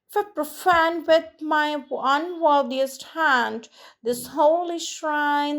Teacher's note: five pairs of alternating unstressed and stressed syllables